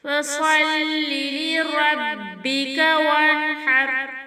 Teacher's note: نون ساکن کے بعد حرف القلب سے ہا ہے تو یہاں پر نون کو واضح کر کے پڑھیں گے، غنہ بالکل نہیں کریں گے۔ را ساکن سے پہلے زبر ہے تو را کو پر پڑھیں گے